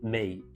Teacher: And neither do most other Vietnamese foods that are traditional except you have to be really careful around me, m i with a falling tone on it